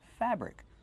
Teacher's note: Put the stress on the first syllable.